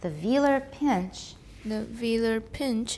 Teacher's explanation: They're both stressed, but pinch gets tonic.